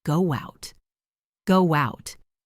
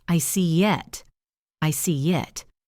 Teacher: When a word ends in a vowel sound, like go or see, and the next word starts with a vowel, like out or on, we often insert a tiny W or Y sound to connect them. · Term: linking vowel to vowel